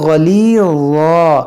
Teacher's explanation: गैन को मोटा करेंगे, हुरूफ़ मुस्तालिया है